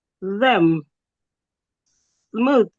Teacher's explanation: Put your tongue in between your teeth and make vibration.